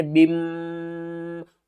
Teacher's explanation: ہونٹ جو ہمارے ہیں یہ دونوں آپس میں مل جائیں گے، جب یہ آپس میں ملیں گے تو آواز ہمارے ناک سے آئے گی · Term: غنہ